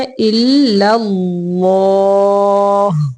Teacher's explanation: پہلا لام باریک ہے، إلا اللہ، اللہ کا لام موٹا ہے